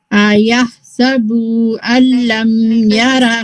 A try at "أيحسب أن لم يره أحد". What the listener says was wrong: फिर से आपने बू पढ़ा है. बू पढ़ेंगे तो वाव ऐड हो गया. We don't want that wow, right?